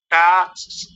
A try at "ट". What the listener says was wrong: पहले तो टा मत बोलिए, टा नहीं, ट, ट बोला कीजिए, आ क्यों लगा रहे हैं। स नहीं, श